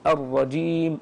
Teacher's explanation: تخرج من وسط اللسان الجيم هذه وتكون شديده